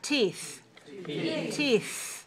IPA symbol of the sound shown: θ